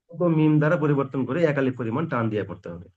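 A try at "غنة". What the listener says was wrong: একালিফ পরিমাণ টান নয়, গুণনা। পার্থক্য হলো, গুণনাকে চেপে ধরে রাখতে হবে, টান লম্বা করতে হবে। আওয়াজকে, আওয়াজকে একটা চেপে রাখা আর একটা আওয়াজকে লম্বা করা, পার্থক্য আছে কি নেই?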